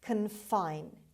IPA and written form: kənˈfaɪn (confine)